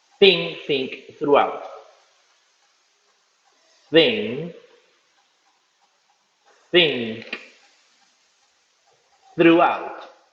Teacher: Ustedes ponen su lengua entre los dientes y dejan salir el aire. Si ponen la mano en la garganta, se van a dar cuenta que no vibra, porque este no tiene voz.